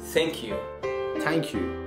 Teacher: T and H one put together make the th sound but in Persian accent it makes the T sound